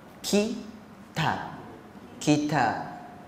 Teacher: Ingatlah huruf kaf dengan huruf ta tu dia ada angin.